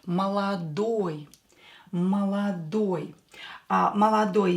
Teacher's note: we will use oi because the last syllable is stressed. Oi syllable is stressed.